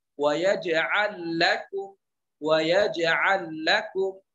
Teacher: lam bertemu dengan lam juga, maka dia idgham